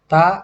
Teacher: ujung lidah ketemu gigi yang atas seperti itu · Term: apikodental